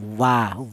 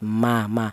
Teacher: Untuk huruf wawu, keluarnya huruf berasal dari kedua bibir yang renggang ya, sama-sama kedua bibir. Kalau wawu ini renggang, wa, yang mim rapat